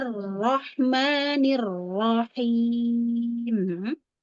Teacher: Ra-nya digetarkan yuk. Ada takrir.